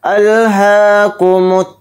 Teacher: ہا کے اوپر کھڑا زبر ہے، ہا کو تھوڑا کھینچ کر پڑھیں گے، باقی سب حرف جلدی پڑھے جائیں گے۔